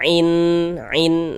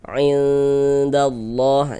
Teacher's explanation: Nah, jadi bunyi nun sukun atau bunyi tanwinnya itu kita baca samar gitu. Nah, dengan bersiap-siap kita masuk ke dalam huruf ikhfanya. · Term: ikhfa hakiki